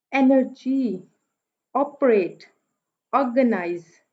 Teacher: पहला जो है वो सिलेबल स्ट्रेस में आ गया, अगले दोनों सिलेबल्स जो है वो अनस्ट्रेस्ड में आ गए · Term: डिक्टेलिक